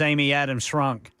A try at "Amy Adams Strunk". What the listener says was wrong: There's a T in there.